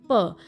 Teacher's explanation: प बोलते वक्त दोनों लिप्स चिपक रहे हैं